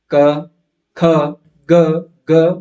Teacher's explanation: जीवा का पिछला भाग कंठ में थोड़ा सा टकराता है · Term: कवर्ग